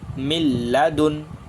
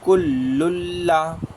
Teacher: لام اور را میں بغیر گنہ کی پڑھیں گے